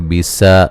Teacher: सीन को बारीक सीटी से अलिफ मद्दा है